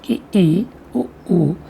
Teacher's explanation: समृद्ध स्वर ये वे स्वर हैं जिनके उच्चारण में मुख लगभग बंद रहता है